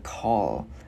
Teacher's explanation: Chữ K mình bật cổ ra.